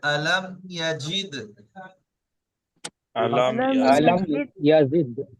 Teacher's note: হ্যাঁ, এখানে দালের উপরে সাকিন এসছে, দাল হরফে কলকলা 5টি অক্ষরের মধ্যে একটি, তাই কলকলা করে পড়তে হবে, ধাক্কা লেগে।